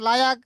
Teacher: লাম ইয়ার সাথে মিলাই ফেলাইতে হবে, লাম আলাদা উচ্চারণ করা যাবে না। লাম যদি আমরা আলাদা উচ্চারণ করি সেক্ষেত্রে লামের টান হয়ে যাবে, আর লামে যদি বিন্দু মাত্র টান হয়ে যায় তাহলে ওই লামটা আর লামে তাকিদ থাকবে না, লামটা লামে নাফি হয়ে যাবে।